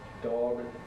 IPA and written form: dɒg (Dog)